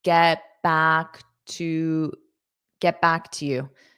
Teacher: you're not going to push out that T.